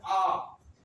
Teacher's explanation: बिल्कुल मुंह खुल के बोला जाता है आ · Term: विवृत